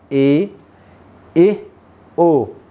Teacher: अर्धविवर्तमुखी जब मुख आधा खुला होता है